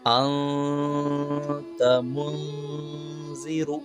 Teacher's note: نون کی آواز کو ناک میں چھپا کر غنہ کے ساتھ پڑھیں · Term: اخفا